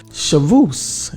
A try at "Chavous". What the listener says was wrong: The S is silent.